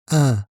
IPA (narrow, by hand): ɛ̃